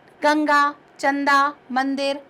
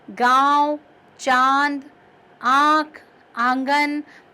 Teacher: जब अनुनासिक बोलते हैं तो नासिका और गले दोनों का प्रयोग करने के कारण उसका जो उच्चारण का समय है वो बढ़ जाता है। आप बोलकर देखिए, गांव, चांद, आँख, आंगन, तो आप महसूस करेंगे कि उसका समय भी बढ़ जाता है।